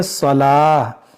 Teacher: اس گول تا کو ساکن کر دیں گے